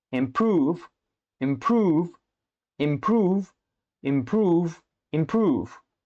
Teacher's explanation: Your pronunciation of improve was consistent and clear each time. The ooh sound was well emphasized and the v sound at the end was distinct. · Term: oo sound